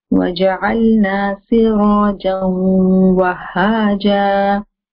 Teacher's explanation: I'm taking the sound in the nose and keeping it there. So it's making the nasal sound. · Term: idgham with ghunna